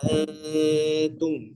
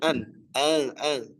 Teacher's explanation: Ada ikhfa namanya. Ingat, nun sukunnya disamarkan ya. Nun sukunnya disamarkan, bukan dibaca.